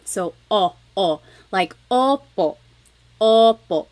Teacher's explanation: I think of it like having a ball in your mouth your tongue gets kind of pushed back and down a little bit and the inside of your mouth is open and wide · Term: the letter O